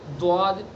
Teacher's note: अगर सना उलिया की जड़ पर नोक लग गई तो फिर द्वाद की आवाज़ आ जाएगी, द्वाद। तो जो अगला हिस्सा है, ये पूरा हिस्सा, ये किनारे, नोक, इसको हमें कहीं भी टच नहीं होने देना है।